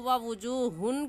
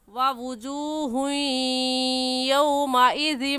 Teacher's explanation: اس ہا کو یا کے ساتھ اس لیے ملا رہے ہیں کیونکہ تنوین کے بعد حروف یرملون میں سے یا آ گیا ہے تو غنہ کرنے کے ساتھ ساتھ ادغام بھی کریں گے یعنی اگلے لفظ کے ساتھ ملا کر پڑھیں گے. تو ووجوہن کہنا غلط ہے اور صحیح ہوگا ووجوہ یومئذ.